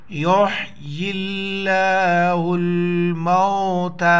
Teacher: حا پیش یحیی اللہ یا لام سے پلس ہو جائے گا لفظ اللہ پہلے زیر ہے لفظ اللہ کو باریک پڑھیں گے موٹا نہیں پڑھیں گے